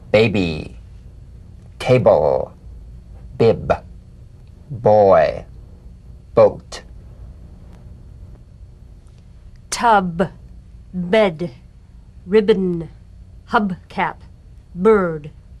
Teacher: the springing away from contact not by pressing the lips together you'll feel a gentle voiced pulsation on the lips like a delicate crisp tap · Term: drum beat b